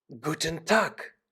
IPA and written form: ˈɡuːtn̩ ˈtaːk (Guten Tag)